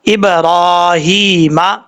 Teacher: را کے اوپر کھڑا زبر لمبا کریں گے، ہا کے نیچے بھی کھڑی زیر ہے، ایک الف کی مقدار، دونوں کو لمبا کریں گے